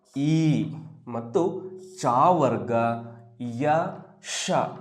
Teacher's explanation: ಅದು ಈ ಮತ್ತು ಚಾವರ್ಗ, ಯ, ಶ, ಇಷ್ಟು ಅಕ್ಷರಗಳು ನಮ್ಮ ದವಡೆಯ ಭಾಗ ಏನಿದೆಯೋ ಆ ಭಾಗದಲ್ಲಿ ಹುಟ್ಟುವಂತಹ ಒಂದು ಅಕ್ಷರ ಅಂತ ನಾವು ಹೇಳ್ಬೋದು. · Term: ತಾಲವ್ಯ